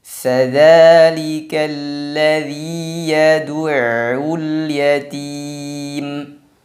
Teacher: Di sini pada kata al-yatim hukumnya adalah qamariyah. Maka lamnya terbaca.